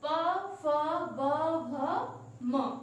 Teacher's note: इनका उच्चारण करते समय हम ओष्ठ का प्रयोग कर रहे हैं, इसलिए इसको ओष्ठ वर्ण कहते हैं।